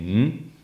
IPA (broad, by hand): ŋ